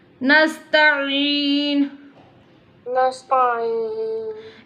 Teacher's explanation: Ain pronounced from the middle part of the throat.